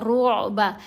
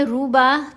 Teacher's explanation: عین کو گلے سے ادا کیا جاتا ہے، گلے کے درمیان والے حصے سے، حلق سے۔ تو یہاں ہم نے را کو جب عین سے ملائیں گے تو آواز لہر کی طرح گلے کے درمیان سے ہو کر واپس را پر آئے گی۔